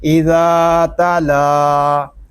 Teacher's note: لام کھڑا زبر لا اذا تلا. لام کو ہم ایک الف تک کھینچ کر پڑھیں گے کیونکہ یہاں پہ کھڑا زبر ہے اور کھڑا زبر جو ہے اس کو ایک الف تک کھینچ کر پڑھتے ہیں.